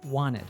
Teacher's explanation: we drop the T in the NT combination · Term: connected speech